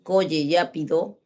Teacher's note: cuando el niño dice coye yá pido su lengua no vibra